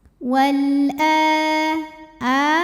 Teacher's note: Wal a mad badal karena ada hamzah yang dipanjangkan. Cara bacanya dipanjangkan, a-nya ini 2 harokat